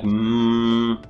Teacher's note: it comes through your nose because it's a nasal sound and it's bilabial